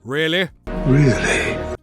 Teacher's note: that E sound can get contracted to an I sound